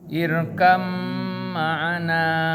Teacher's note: Hati-hati bak sukun bukan qalqalah. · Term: Idgham mutakarribain